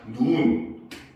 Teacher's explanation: 하늘에서 내리는 눈은 길게 발음을 하죠. 얘는 한 글자짜리니까 그냥 눈 이렇게 발음을 하면 됩니다. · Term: 장음